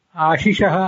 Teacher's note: ಆಶಿಷಃ ಅಂತ ಅನ್ನುವಲ್ಲಿರೋದು ಮೊದಲನೇದ್ದು ಶಂಕರ ಶಕಾರ, ಆಮೇಲೆ ಬರುವಂಥದ್ದು ಷಣ್ಮುಖ ಶಕಾರ. ಮೊದಲನೇದು ತಾಲವ್ಯ ಶಕಾರ, ಆಮೇಲೆ ಬರುವಂಥದ್ದು ಮೂರ್ಧನ್ಯ ಶಕಾರ